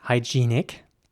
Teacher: in british english it would be pronounced hygienic with a long e sound in the middle